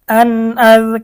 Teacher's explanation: নুন সাকিন বা তানভিনকে গুন্নাহ ছাড়া স্পষ্ট করিয়া পড়িতে হয় এখানে নুন সাকিনের পরে হামজা আসছে ইজহারের হরফ হামজা আসছে গুন্না ছাড়া স্পষ্ট পড়তে হবে